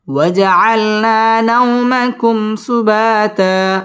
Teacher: ওয়াও ঠোঁট গোল করে উচ্চারণ করতে হবে